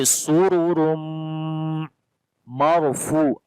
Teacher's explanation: And after the Tanween which is on the Ra. So the both Ra we read in heavy sound. On the second Ra this is Tanween.